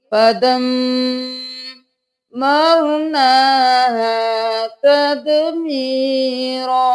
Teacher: میم پر تشدید ہے 2 بار ادا کریں گے گنہ بھی کریں گے